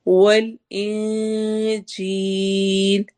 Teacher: نون کی آواز کو چھپائیں گے، اخفا کر کے پڑھیں گے کیونکہ اس کے بعد جیم آ رہا ہے. جب بھی نون ساکن یا تنوین کے بعد حروف حلقی ادغام والے حروف حروف یرملون اور با کے علاوہ کوئی بھی حرف آ جائے گا تو وہاں پر ہم اخفا کر کے یعنی نون کی آواز کو چھپا کر پڑھیں گے.